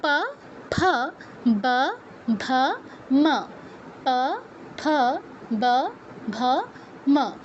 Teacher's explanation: উঠ আর অধর মিলে এদের উচ্চারণ করতে হয়। দাঁতের কিন্তু কোন কাজ নেই। প বর্গের অক্ষর উচ্চারণের ক্ষেত্রে।